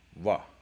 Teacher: More often than not, they're going wa, which is the approximate. You are using your lips against your teeth, but it's not all the way closed the way that a V is. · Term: the approximant